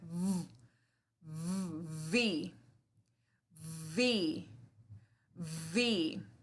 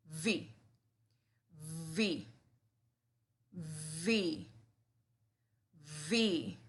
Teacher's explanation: La B corta se llama B labidental porque se produce entre los dientes de arriba y el labio inferior